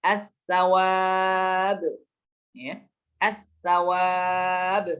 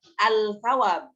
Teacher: Maka dileburkan, lamnya jadi tidak dibaca. Langsung dimasukkan ke huruf selanjutnya. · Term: lam syamsiyah